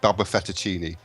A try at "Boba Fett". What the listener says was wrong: It's Boba Fett, not Baba Fett. You said Baba.